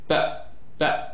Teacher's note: Sorry, if you feel vibration, that's voiced, and if you don't feel, that's voiceless. So when I produce the sound p, I don't feel any vibration here